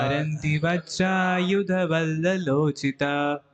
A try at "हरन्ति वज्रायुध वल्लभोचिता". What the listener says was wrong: वल्ललो नहीं, वल्लभो होना चाहिए। वल्लोल, वल्लोलो कहाँ हो गया?